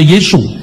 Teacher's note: Orang Tionghoa tidak bisa ngomong huruf S di akhir nama-nama Yunani. Maka Yesus dibaca Yesu.